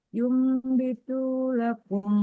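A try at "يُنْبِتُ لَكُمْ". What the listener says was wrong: Tunya sama, tunya jangan dipanjangin. Jangan. Yumbitu lakum, tidak. A-nya pendek, Bun. A-nya pendek, Bun.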